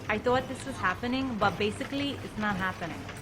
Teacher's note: it's not happening so basically you hear that little Latin flavor very fast tip of the tongue that t sound definitely does turn to a D